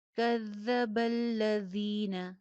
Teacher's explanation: ذال کا مخرج چیک کیجئے، کذا میں بھی ہے، الذین میں بھی ہے، سیٹی کی آواز نہیں آئے گی ، کذب الذین، ذین یا مدہ ہے، ایک الف کے برابر